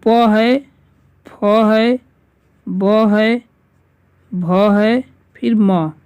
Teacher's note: ये जितने हैं पांच ये क्या है ओट से होते हैं